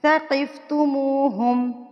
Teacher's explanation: منہ کو ہم کھینچ کے پڑھیں گے، واؤ سے پہلے اگر پیش آ جائے تو یہ واؤ مدہ بن جاتا ہے